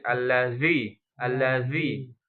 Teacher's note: harus ada ee gesekan ujung sama ujung ujung gigi seri sama ujung lidah dan lidahnya keluar sedikit. Kalau keluar sedikit belum bisa enggak apa-apa banyakin.